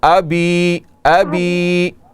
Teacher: آبی نہیں ہے, اس زبر کو آپ لمبا نہ کریں